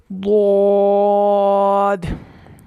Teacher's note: زبان کی کروٹ کو اوپر کی داڑوں کی جڑ سے لگا کے حروف مستعلیہ پر پڑھنا ہے